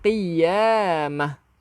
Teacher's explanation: Bunyikan hak. Kita tak bunyi tak. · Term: tak marbutah